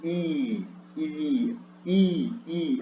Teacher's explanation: Quando eu digo i, a língua vai para frente, tá? Horizontalmente.